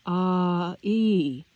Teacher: vowel sound is actually two which are Blended together for instance the long I sound in the English word I is actually ah e